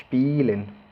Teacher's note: Si se fijan, el sonido de la E, de la primera E, no suena, sino que la I se hace larga.